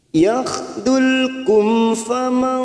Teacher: mim sukun bertemu fa, namanya bacaan idhar safawi. Kita baca jelas tanpa mendengung.